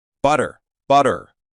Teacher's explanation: hear the clear T but in American English the T shifts into a soft D